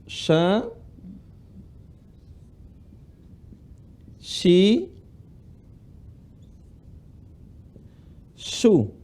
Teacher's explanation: Huruf sya tempat keluarnya adalah tengah lisan ketemu langit-langit.